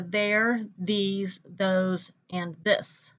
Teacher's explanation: the words where the th is voiced